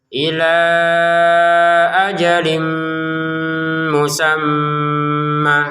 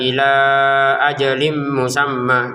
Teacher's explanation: Jangan membacanya sebagai ila ajim musamma. Jadi, pengucapannya harus dinasalisasi selama dua ketukan. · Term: ghunnah